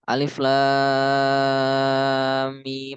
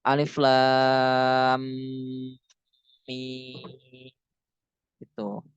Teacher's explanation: Tapi dari lam ke mim itu harus diidghamkan dua harkat. Jadi alif lam mim itu. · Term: musakol harfi